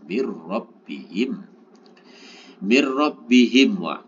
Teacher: nun sukun bertemu dengan ro, maka cara membacanya adalah idgham bila gunnah.